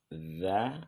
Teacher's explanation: letaknya di ujung lidah dengan ujung gigi seri yang atas dza agak sedikit dikeluarkan lidah dan digigit ya D ya dia